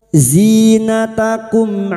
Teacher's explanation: Mim sukun dibaca jelas tanpa mendengung. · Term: Izhar syafawi